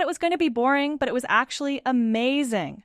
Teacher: The stress on boring and amazing helps the listener follow the emotional shift